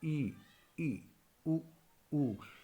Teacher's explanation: संवृत मतलब होता है क्लोज, यानी कि मुंह पूरी तरह नहीं खुलता इसमें।